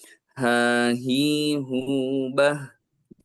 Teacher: Hurufnya sama dengan huruf hamzah, jadi di bawah ya. Jadi mirip kayak di dada gitu, tapi bukan di dada, tapi di tenggorokan paling bawah. Jadi A dan huruf H itu memiliki makhraj yang sama.